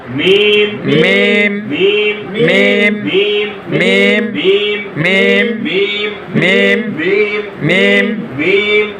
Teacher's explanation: দুই ঠোঁট হইতে ওয়াও বা মিম উচ্চারিত হয়